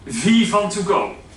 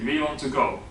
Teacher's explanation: Then I'm obviously substituting the W with a V, right?